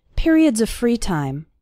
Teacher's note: the word of runs into the word free